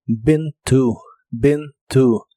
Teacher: participio de inglés es been to que significa estado en Ben se pronuncia con una I corta que se parece un poco a la e